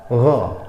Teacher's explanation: Huruf ghain ini letaknya ada di ujung tenggorokan. Gha, jangan go ya.